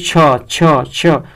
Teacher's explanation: और छ जो है अघोष और महाप्राण है